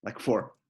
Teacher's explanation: fourth tone is the downwards